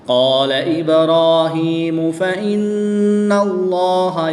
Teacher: لام سے پہلے نون پر زبر ہے تو اس لیے اس لام کو پر یعنی موٹا پڑھیں گے